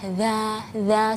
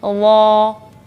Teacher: Za tipis ya, istifal, infitah, za seperti itu. Tapi kalau huruf dha dia isti'la sama idgham. Jadi lidah kita ditekuk.